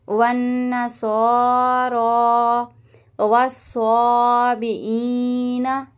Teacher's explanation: سا نہیں بولیے گا، اس کو سو کو موٹا کیجیے گا